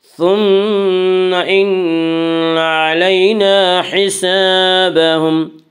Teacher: ثم میم مشدد غنہ ہوگا، غنہ کی مقدار 1 الف ہے۔